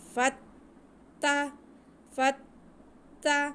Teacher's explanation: فا کو ہم تا کے ساتھ ملائیں گے تھوڑا رک کے، کیونکہ تا پہ شد ہے۔